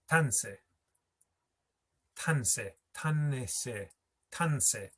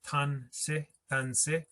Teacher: It's kind of like the tan pushes over that short I and you just hear tanse, tanse, but that I is still there because this word is made up from tan and ese.